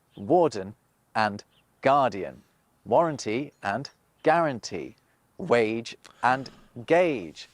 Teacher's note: When Norman French used a w sound at the start of a word, the central French dialect tended to use a g.